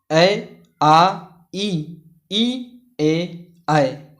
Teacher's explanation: इनके उच्चारण में ओंठ वृत्त या गोलाकार नहीं होते हैं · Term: अवृतमुखी स्वर